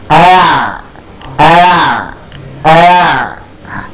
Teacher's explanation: huruf Ain itu jelas dia tempatnya di tengah tenggorokan dan nantinya kita akan keluarkan dia Khususnya ketika dalam keadaan panjang